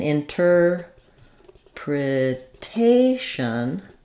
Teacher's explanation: we stress the syllable before the shun and so now this T is in the stress syllable so